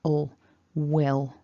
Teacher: with will, we've got that w, a short I and a dark L. So it's not at the front of the mouth, it's at the back.